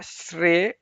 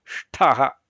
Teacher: ಅದೇ ಆರ್ಡರ್ ಅಲ್ಲೇ ಬರುತ್ತೆ ಶ್ರೇಷ್ಠಹ ಅಂತ ಹೇಳಿ ಉಚ್ಚಾರಣೆ ಮಾಡುವಾಗ ಅದನ್ನ ಗಮನಿಸಿಕೊಳ್ಳಬೇಕು ಮೊದಲನೆಯದು ತಾಲವ್ಯ ಶ್ರೇ ಎರಡನೆಯದು ಮೂರ್ಧನ್ಯ ನಾಲಿಗೆ ಮೇಲೆ ಹೋಗುತ್ತೆ